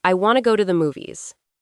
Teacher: Focus on stressing the important words want, go, and movies.